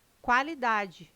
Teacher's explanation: O QU não é dígrafo, não é pronunciado com um som único. O quá traz um ditongo, dois sons UA.